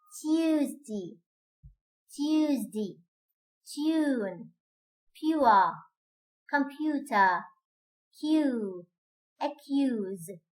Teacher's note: All of these have the sound ye in medial position, preceded by t and p or k, and in this case, they're going to lose its voicing. It's going to be voiceless.